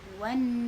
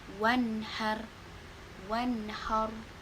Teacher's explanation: Nun sukun ini dibaca jelas sesuai dengan tempat keluar nun tersebut. Gak boleh mantul, gak boleh wan, gak boleh juga wan, gak boleh ditahan. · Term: izhar kholaki